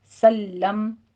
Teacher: لام کی تشدید ادا کیجئے، تھوڑا سا رک کر سختی کے ساتھ اس کو پڑھنا ہے